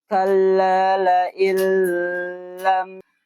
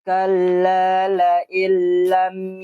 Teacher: Nah, jadi ada dengung di huruf lam.